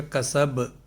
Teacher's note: کسب، کاف اور سین میں حرکت، اور با جو ہے یہ چونکہ یہاں ساکن ہو رہا ہے وقف کی وجہ سے تو لہٰذا اس میں قلقلہ کا قاعدہ ہوگا، سین با کے ساتھ مل جائے گا